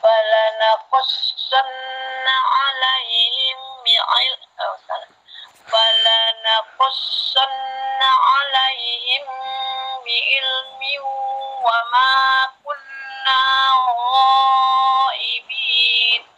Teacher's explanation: Ini di sini ditahan, mim mati bertemu ba, ikhfa safawi ditahan ya